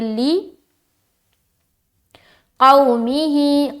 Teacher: آگے لام زیر لی، قاف واو زبر قو، لی قومہ، کیا ہے لی قومہ، لام زیر لی، یہاں پر لام کے نیچے زیر ہے تو معروف کا خیال رکھنا ہے، آواز مجہول نہ ہونے پائے